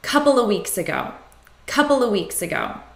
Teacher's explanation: So when we have of between two nouns, we reduce it to a.